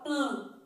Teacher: coloca a mão no nariz que você vai perceber que o som que você está emitindo é um som nasal